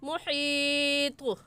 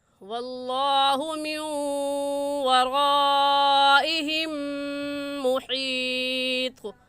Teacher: طا حروف قلقلہ میں سے ہے، قلقلہ کریں گے